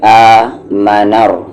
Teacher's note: الف پر کھڑا زبر ہے، آمنر، نا کو یہاں را ملائیں گے، را یہاں پر ہیوی پڑھا جائے گا کیونکہ اس پر زبر ہے